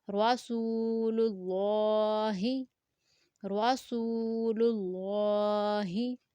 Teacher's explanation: را کو پر پڑھیں گے کیونکہ را زبر کے ساتھ ہے، سین کو 2 سیکنڈ تک لمبا کریں گے کیونکہ واو مد ہے اور اللہ لیٹر سے پہلے اب پیش ہے تو اس لیے اللہ والے لام کو ہم نے موٹا پڑھا، رسول اللہ۔